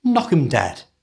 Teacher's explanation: Notice that the word them is often shortened to just 'em. So, it's knock 'em dead.